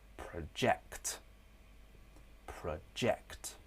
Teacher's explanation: The first syllable on the verb form is weak. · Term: schwa